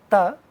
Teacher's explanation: The place of articulation for t is teeth, where the tip of the tongue goes very close or in between two teeth that are upper teeth and lower teeth and then we get these sounds.